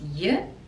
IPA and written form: jə (your)